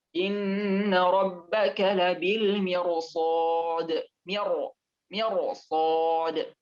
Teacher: Ketika ro sukun yang setelahnya ada huruf isti'la, maka dibaca tebal atau tafkhim